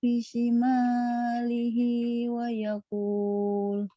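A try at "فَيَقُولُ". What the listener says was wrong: Fa bukan wa yaqul ya.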